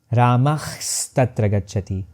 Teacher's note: I begin with visarga as a voiceless glottal fricative but I end up dentalizing it and transforming it into a sibilant half s.